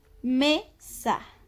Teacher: nuestro acento recae en la sílaba me.